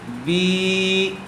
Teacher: با کھڑی زیر بی، با کے نیچے کھڑی زیر ہے اور کھڑی زیر برابر ہوتی ہے یا مدہ کے، اس لیے با کو تھوڑا کھینچ کر پڑھیں گے۔